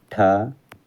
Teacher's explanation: मूर्धन्य महाप्राण अघोष वर्ण व्यंजन का उदाहरण है